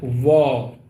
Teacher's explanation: व दांत और ओष दोनों मिलाकर के इसका उच्चारण होता है